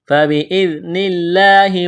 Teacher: فبإذن اللہ، ذال کو نرم کرنا ہے، لفظ اللہ کے نام سے پہلے زیر ہے، لفظ اللہ کے نام کو باریک کرنا ہے